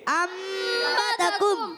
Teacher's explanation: اقلاب۔ یعنی نون ساکن تنوین کو میم سے بدل کر پڑھتے ہیں